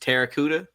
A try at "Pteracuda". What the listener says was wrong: I think you supposed to pronounce the P.